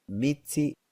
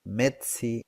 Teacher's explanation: Now, other interesting aspects about the consonant inventory, the affricates contrast with the sequence of phoneme T and S. T is longer and S is shorter in the affricate than in the sequence.